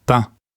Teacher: the end of the word goes away and it gets shortened down to one syllable